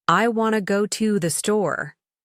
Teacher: Everything else is quickly reduced. I want to go to the store. This is the natural rhythm of American English. Strong, weak, weak, strong, weak, strong.